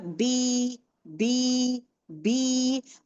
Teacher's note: मेरे दो होठ लगे हुए थे। उसको डिस्कनेक्ट की हूं। दोनों को अलग कर रही हूं मैं। देन उसके बाद यह आवाज ई की आवाज आ रही है।